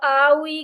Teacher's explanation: जो अरबी जबान के वॉवल्स है ना, वो अदा हो रहे हैं। जब आप आ उ ई करते हैं ना, तो आपके जो वोकल कॉर्ड्स हैं वो वाइब्रेट करते हैं।